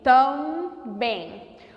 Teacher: O A e o M tem o som do A nasalizado.